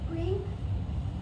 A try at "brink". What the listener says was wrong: there is no R in it. You're saying brink. You got to look at the letters that you see.